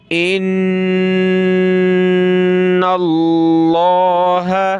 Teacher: نون پہ تشدید ہے، غنہ کریں گے